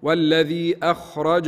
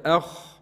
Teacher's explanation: أخ لابد من تفخيم الخاء